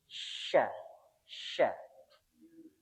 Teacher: karena ini syin ada titik tiganya maka yang naik yang tengah-tengahnya tengah lidah